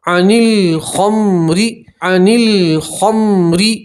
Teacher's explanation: را کے نیچے زیر را کو آپ باریک پڑھیں گے